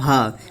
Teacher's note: भ जो है महाप्राण घोष वर्ण है